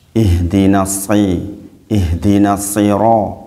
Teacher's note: Nah, ini sod itu butuh perjuangan memang untuk bisa betul-betul, karena sama-sama meletakkan lidah di gigi taring, di gigi seri maksudnya, meletakkan lidah gigi seri. Tetapi kalau sin itu tipis, sod itu tebal. Bedanya cuma tebal sama tipis.